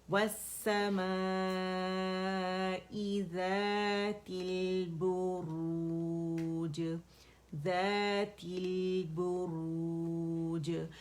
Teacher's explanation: لام پہ ٹکنا نہیں ہے, جسٹ توسط شو کرنا ہے, 1 کاؤنٹ کے لیے اس پہ جانا ہے